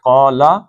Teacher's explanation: قال، قاف کو موٹا پڑھنا ہے، قال، قال، قا دو حرکتیں، لم ایک حرکت